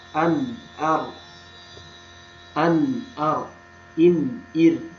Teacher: Selanjutnya ada huruf nun dan ro. Di sini ujung lidah yang bertemu dengan langit-langit